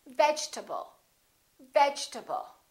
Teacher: this a is reduced because it's part of the unstressed syllable